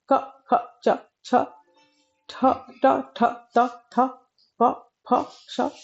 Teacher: अघोष वर्णों की अगर बात करें तो जिन व्यंजन ध्वनियों के उच्चारण में स्वर तंत्रियों में कंपन नहीं होता है उन्हें अघोष व्यंजन कहते हैं